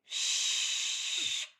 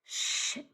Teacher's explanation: shh is a voice off stretchy sound